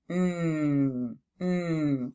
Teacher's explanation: You do feel it buzzing because you are using your vocal cords to produce your sound. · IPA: /n/